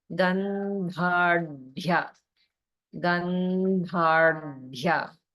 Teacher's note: you have two different dha sounds, but the first one is the dental dha, and the second one is the retroflex rdha. Also, there's holding on the rdha, so just watch out for that.